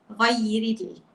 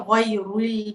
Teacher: Huruf istifal ni contohnya huruf ra. Sepatutnya nipis.